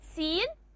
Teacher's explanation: We said the vowel e is affected by the nasal n. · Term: nasalization